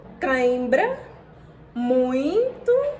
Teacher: existem os ditongos nasais, que ao serem pronunciados, o som sai não apenas pela boca, mas também pelo nariz.